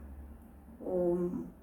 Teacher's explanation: 그리고 깊고 풍부하고 적당한 목소리로 모음 오를 발음하십시오. 턱이 반쯤 벌어지고 입술은 동그랗게 되어야 합니다. 또한 혀끝을 입안에 낮게 오므러뜨려야 합니다. · 자, 오 소리를 낼 때는 흉곽에서 목소리가 울리는 것을 느껴야 합니다. 그리고 미음 소리를 낼 때는 콧구멍을 통해 소리가 울리는 것을 느껴야 합니다. 제대로 되면 두 소리가 합쳐져서 하나의 오옴 소리가 됩니다.